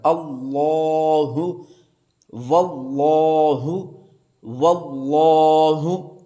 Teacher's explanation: لام ہوتا ہے اس کے بارے میں قاعدہ یہ ہے کہ اگر اس لام سے پہلے زبر آ جائے، پیش آ جائے، تو یہ لفظ اللہ کا لام موٹا پڑا جائے گا